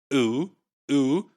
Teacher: the high oo vowel, back vowel,